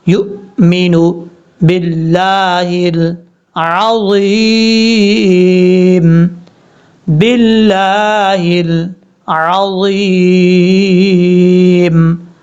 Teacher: یا کو جب حمزہ سے کنیکٹ کریں گے تو حمزہ سختی کے ساتھ پڑھا جائے گا